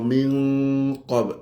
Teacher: Nun dengan qaf dia jadi ikhfa. Jadi qaf di situ kita kena dengung dengan mufakhamah